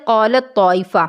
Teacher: ہے، دوسرا حرف متحرک ہے۔ اب اگر غور کیا جائے تو تا اور طا ان دونوں کا مخرج ایک ہوتا ہے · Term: ادغام